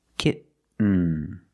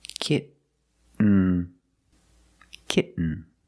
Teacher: You do the stop T, kit. You don't release, and then you fall to an N